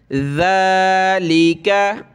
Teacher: ये ज़ाल पे ज़बान निकाली जाती है, खड़ा ज़बर है इसके ऊपर, ज़ाल खड़ा ज़बर ज़ा।